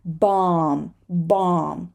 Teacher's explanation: just imagine that this B is not there and it's not Bo it's ba